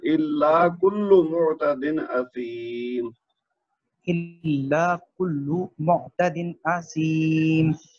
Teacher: جہاں پہ میم آتی ہے نا اس کو 1 حرکت دینی ہے, لمبا نہیں کرنا.